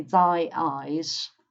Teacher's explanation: it sounds a bit ugly because there's a break between thy eyes